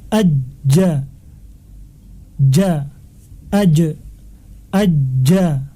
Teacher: Di sini jim sifatnya jahr, jelas, atau tidak ada aliran nafas karena tekanannya yang kuat.